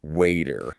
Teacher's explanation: In American English, a T between two vowels, like in water, sounds like a soft D. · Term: flap T